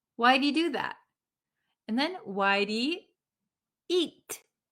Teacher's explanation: So he often becomes just E.